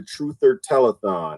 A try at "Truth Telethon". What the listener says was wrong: Telethon, truth. You put an ER in the end. It's the Truth Telethon.